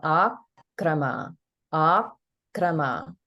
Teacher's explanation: you can hear the holding on the ik in akrama. Now, if we look at the kru in krutaye, here is one syllable, and this is just the ka consonant plus the r vowel.